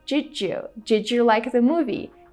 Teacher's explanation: when the letter D is followed by the letter Y we create this J sound